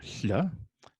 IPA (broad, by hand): ɬ